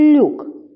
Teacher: в другому слові Люк перший звук ль м'який